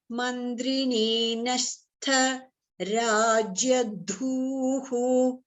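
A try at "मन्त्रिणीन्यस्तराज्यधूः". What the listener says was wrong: Okay, Mantrini Zini should be Murdhani and Nyastha ta is Alpa Prana, not Nyastha. Nyastha, not tha. Nyastha, not tha. Ta, ta, ta.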